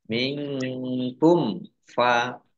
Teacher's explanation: Mim sukun bertemu dengan huruf fa, bacaan izhar safawi dibaca jelas. · Nun sukun bertemu dengan huruf kaf, bacaan ikhfa dibaca samar-samar.